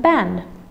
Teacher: in can't, the a vowel becomes nasalized, and for in a tautosyllabic nasal followed by a tautosyllabic nasal, it becomes nasalized.